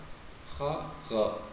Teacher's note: ada di pangkal di ujung tenggorokan kha dan gha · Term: makhrajnya sama